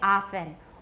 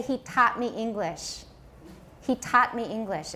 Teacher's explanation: half the us now does not distinguish between ah and awe